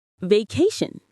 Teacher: In the word vacation, we stress the middle part. Vacation, not vash or vagashan.